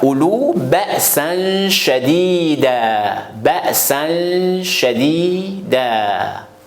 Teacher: Si le mot ou une phrase, par exemple, ça termine par double A en arabe, ça, il faut, on répète tout le temps que tous les mots aux phrases, ça termine par double A à la fin, au moment de l'arrêt. Il ne faut pas prononcer le double A. Ça reste simple A, mais il faut prolonger le simple A. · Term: tanwinun nasb